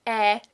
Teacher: So, you pronounce an E, and your tongue stays in the same position, you just open your mouth further, and that should get you right on the spot, or at least very close to what an eh is supposed to sound like. Tongue is very much in the front. Your mouth is wide open, almost as wide open as for an ah. And if you have trouble forming it from scratch, try sliding into it from pronouncing an e, like in very, very, very, very.